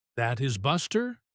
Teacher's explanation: if your voice goes up at the end, That is Buster? You are turning it into a question. · the rising pitch tells your friend that you are not sure, and you need them to say yes or no.